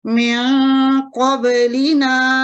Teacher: نون ساکن کی جو آواز ہے اس کو تھوڑا سا بھاری کر کے پڑھیں گے